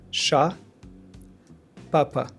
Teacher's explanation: No tension. Very open and clear. Ah. Ah. No glide.